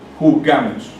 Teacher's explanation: el sonido fonético está en la penúltima sílaba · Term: palabras graves